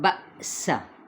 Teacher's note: سین کی سیٹی کو واضح کریں